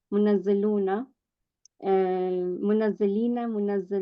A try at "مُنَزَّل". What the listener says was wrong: No, no. You are changing fatha to kasra.